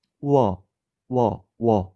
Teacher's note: 마찬가지로 워도 우에서 어로 가면서 소리가 난다는 걸 알 수가 있습니다. 우어, 워 이렇게 이중모음이 된다는 걸 알 수 있고, 그러면 와나 워를 발음할 때 앞에 짧게 나는 이 소리들을 반모음이라고 볼 수 있고, 반모음 기호로 오나 우 위에 이렇게 체크해서 반모음 오우라고 표현을 합니다.